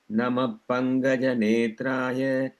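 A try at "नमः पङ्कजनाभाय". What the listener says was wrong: That Namah Pankaja, you have to say, it is kind of like the F sound in English. You can try practicing with like that. Then you have to blow through your lips. Namah Pankaja Nabhaya. It is not Namah Pankaja. Namah. For all of you, write down an F itself over there. That's how our elders taught us. Write down an F in.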